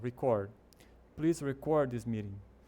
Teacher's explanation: Repare que o ênfase tá no final.